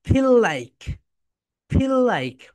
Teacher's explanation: যখন এফ উচ্চারণ করবে তখন তোমাদের উপরের দাঁত নিচের ঠোটের সঙ্গে টাচ করবে